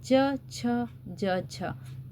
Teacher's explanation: जीभ के जो दोनों किनारे हैं ऊपर वाले हिस्से मतलब तालू को टच कर रहे हैं।